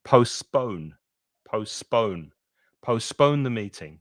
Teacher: Notice with postpone that you're stressing the second syllable